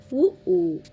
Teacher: இதழ்களை குவிப்பதால் பிறக்கும் எழுத்துக்கள்